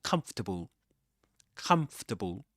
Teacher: Even though Even though you see in the spelling four syllables come, [Music] but it's pronounced comfortable as three syllables in this accent